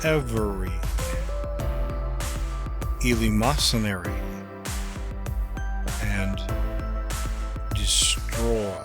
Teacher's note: a long-falling inflection on the emphatic words that is to let the voice fall to a lower pitch